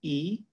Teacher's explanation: In this case, it's the syllable E with a dipping tone